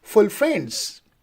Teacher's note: Full would be unstressed and friends would be a stressed one.